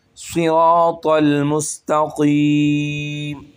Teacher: یہاں پر تینوں حرف موٹے پڑھے جائیں گے، صاد بھی، را بھی اور طا بھی